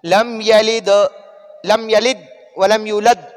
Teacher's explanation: ساکن حروف قلقلہ میں سے دال ساکن ہو جائے تو اس پر جھٹکا کریں گے